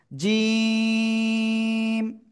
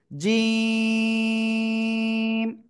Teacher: জিহ্বার মধ্যখান তার বরাবর উপরে তালুর সাথে লাগাবো লাগিয়ে একটু শক্ত আকারে উচ্চারণ হবে · লাগাবো লাগিয়ে একটু শক্ত আকারে উচ্চারণ হবে জিম সবাই দেখেন জিম তিন আলিফ টেনে উচ্চারণ করতে হবে